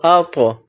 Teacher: اگلا حرف دیکھیے، الف پر زبر ہے، اس کے بعد طا ہے، طا پر جزم ہے، طا کا مخرج زبان کی نوک کو سامنے والے اوپر کے جو دو دانت ہیں ان کی جڑ سے ٹچ کریں گے، طا کو ادا کریں گے، حمزہ طا زبر اط، اور طا کی ادائیگی میں طا ساکن ہے تو قلقلہ ہوگا